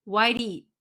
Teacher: we just hold it okay whitey you don't hear the eat you don't hear the t sound